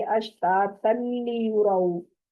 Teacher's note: और अश्ता तल्ली युरऊ, यहाँ पर तनली गुन्ने की आवाज नहीं आएगी क्योंकि आगे लाम है। तो अब इस इदगाम में बगैर गुन्ने के इसको इदगाम करेंगे